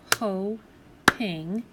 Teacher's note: That's where the cut happens because of the long vowel sound. It's an open syllable, meaning the last part you hear in that first syllable is the vowel sound, the O.